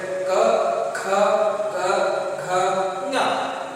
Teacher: ಈ 5 ಅಕ್ಷರಗಳು ಕಂಠದಲ್ಲಿ ಉತ್ಪತ್ತಿಯಾಗುತ್ತವೆ. ನೀವು ಗಮನವಿಟ್ಟು ಉಚ್ಚರಿಸಿ ನೋಡಿದ್ರೆ ಗೊತ್ತಾಗುತ್ತೆ.